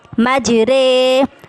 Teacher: میم جیم زبر مج، را امالہ والی کھڑی زیر رے. امالہ کا مطلب ہوتا ہے ری کو رے سے بدل کے پڑھنا، یعنی ری کی حرکت کو ہم رے میں بدلیں گے